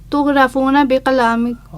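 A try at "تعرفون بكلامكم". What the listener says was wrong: اب غین پڑھ رہی ہو. این پڑھو.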